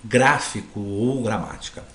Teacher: a antepenúltima sílaba são pronunciadas com mais intensidade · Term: proparoxítonas